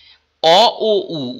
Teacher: অ ও উ উচ্চারণ করলে দেখো জিভ পিছনের দিকে সরে যাচ্ছে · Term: পশ্চাৎ স্বরধ্বনি